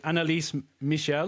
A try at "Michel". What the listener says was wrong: Michel, not your shell, Michel.